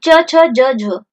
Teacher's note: जो तालव्य के सहायता से जिन वर्णों का उच्चारण होता है उन्हें क्या कहते हैं? तालव्य ध्वनि।